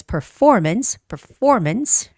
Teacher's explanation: the word performance and the stress is on the second syllable